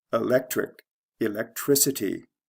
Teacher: this goes from the second to the third syllable where the change in stress takes place